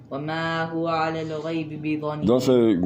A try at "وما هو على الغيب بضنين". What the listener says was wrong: Don't stretch it too much. وما هو على الغيب بضنين.